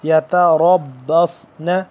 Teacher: سین اور صاد کی آواز میں دونوں میں فرق کرنا ہے، صاد کو تھوڑا موٹا پر کر کے پڑھتے ہیں